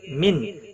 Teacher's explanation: نون ساکن کے بعد حروف حلقی کا حمزہ آیا ہے، اظہار حلقی ہوگا، غنہ نہیں کریں گے